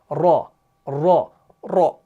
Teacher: लेकिन आप देखिए, जब आप रॉ को पढ़ रहे हैं ना, तो आप महसूस करेंगे कि जुबान जो है ना बार बार ऊपर तालों के साथ लग रही है, ऐसे। यानी जुबान जब उठती है ना, जुबान ऐसे हो जाती है, बेंड हो जाती है, यानी जुबान का ये वाला हिस्सा और ये बैक साइड जो है ना, दोनों ऊपर तालों के साथ लग जाती हैं।